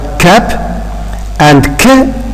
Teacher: These are formed by the narrowing of the vocal tract at the velum. By the way, the velum, you know that it's called a soft palate. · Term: velar consonants